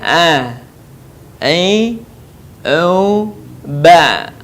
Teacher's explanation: Huruf a keluar dari tengah tenggorokan kita sama dengan cara kita melafalkan huruf h.